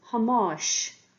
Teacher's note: you'll notice that the ending consonant is slenderized